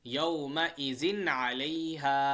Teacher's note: Clarity سے پڑھیں گے، صاف پڑھیں گے، ٹھیک ہے، ناک میں آواز روکیں گے نہیں۔